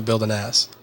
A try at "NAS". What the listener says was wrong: NAS. Sounded like you said ass.